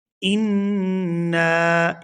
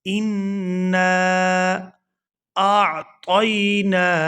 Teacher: نون مشدد پر غنہ کریں گے اور نون کو الف مدہ کے ساتھ ملا کر کھینچ کر ادا کریں گے